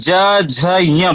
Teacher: ज झ य में अंदर क्या हो रहा है, घोष हो रहा है, गुंजन हो रहा है।